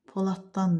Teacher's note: Burda D cingiltili samiti T kimi tələffüz olundu